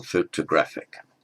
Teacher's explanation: The main stress is on the A, secondary stress is on the O, photographic. And the second O is a neutral vowel